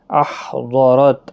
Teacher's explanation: ہا ساکن پر قلقلہ نہیں ہونا چاہیے، ہا کا مخرج صحیح ادا کرنا ہے. ضاد حروف مستعلیہ کا حرف ہے، پر پڑھنا ہے، را زبر کی وجہ سے پر پڑھا جائے گا، تا ساکن ہی رہے گا.